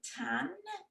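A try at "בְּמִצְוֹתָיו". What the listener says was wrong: Tav. It ends with a V sound. Tav. That's a vav at the end of the word. B'mitzvotav. And the reason this word is pronounced b'mitzvotav is because there's a new grammar rule that is going on here, which is this yud. He has this little asterisk at the bottom of the page. A yud at the end of the word is silent.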